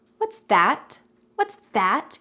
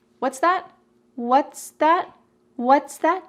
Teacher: They both have equal emphasis.